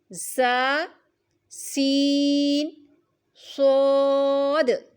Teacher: زبان کی نوک اور دونوں دانتوں کے اندرونی کنارے سے ادا ہوتے ہیں۔ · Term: سیٹی والے حروف